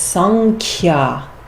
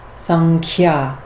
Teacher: the nasal sound in the guttural part of the mouth that corresponds to the kya actually is a different letter. And so we pronounce this sankhya because the Anusvara changes to that sound.